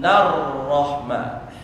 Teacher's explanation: Alif dan lamnya dia sukun tapi tidak tersentuh. Nah, tidak tersentuh maka masuk bagian dari alif lam syamsiyah.